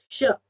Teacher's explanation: श बोलने पर आपकी जीभ तालु पर टकराती है दांतों से थोड़ा सा पीछे, आपका तालु वाला श कहलाता है।